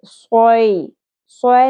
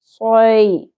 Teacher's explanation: یا ساکن حرف لین ہے، اس کو ہم نرمی سے ادا کریں گے